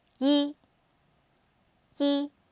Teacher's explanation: the number one in Chinese is he with the first tone the flat tone